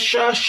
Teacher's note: शाह को बगैर खींचे पढ़े। शीन की आवाज फैलती हुई महसूस होगी।